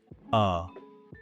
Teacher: It's a super short, completely relaxed, neutral vowel sound. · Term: schwah